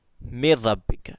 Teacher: را اور لام میں گننا نہیں کرنا